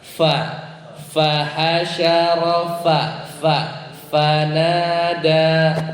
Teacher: ya itu Pa itu masih bibir ketemu bibir usahakan gigi ya gigi atas bertemu dengan bibir bawah jadinya ada aliran udara